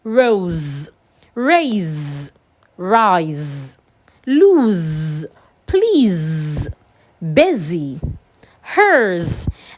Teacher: We have S in between 2 vowels. And because of that, the S sounds like Z.